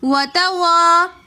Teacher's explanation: وتواصوا میں الف مدہ ہونے کی وجہ سے ہم نے وتوا کھینچ کر پڑھا